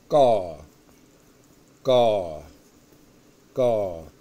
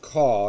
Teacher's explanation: it's a sound that's kind of between a k and a g it's not call and it's not ga yes that's the first